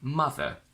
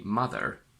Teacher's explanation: In British, we say mother without the r. In American, they say mother. These are both correct, just different accents.